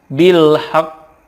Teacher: Karena qaf ini ada qalqalahnya, ditekan kemudian dipantulkan.